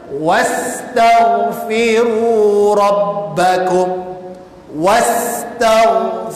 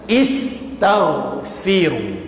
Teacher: Waw ini perlu disambungkan terus pada huruf sin. Maknanya alif ini disuruh kita siap sambung. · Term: tanda bersambung